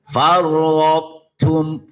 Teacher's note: Idgham mutajanisain naqis. Jadi sifatnya tok masih terasa.